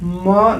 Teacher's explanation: ये वाला जो है म, देखिए म बोल रहे हैं, म, नाक और मुंह दोनों की सहायता से बोला जा रहा है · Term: पंचमाक्षर